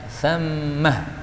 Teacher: ini berhenti boleh pakai ha, thammah. Tapi kalau sambung tidak boleh